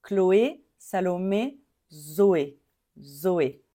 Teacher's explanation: Zoé, on ne dit pas I à la fin, on dit E.